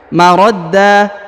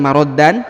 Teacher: Huruf an-nya berubah menjadi a ya. Marodda, jadi lagi bukan maroddan tapi marodda karena sudah berada di ujung ayat atau di ujung bacaan ya, seperti itu ya.